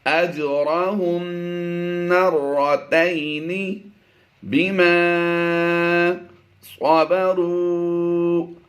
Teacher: اولئک یؤتون، یا حمزہ پیش، یؤتا واو زبر تاؤ، یؤتون اجرہم مرتین، جیم پر ہم نے قلقلہ کرنا ہے، را پور پڑھیں گے، میم ساکن کے بعد دوسری میم آ گئی، یہاں پر ادغام شفوی کرتے ہوئے غنہ آنے کی آواز دیں گے